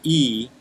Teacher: the tongue when you say e is pushing high into the mouth